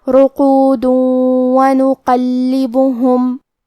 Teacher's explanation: یہاں حکم ہوگا ادغام بغنہ. ہم یہ حکم کو غنہ اور تشدید کے ساتھ ادا کریں گے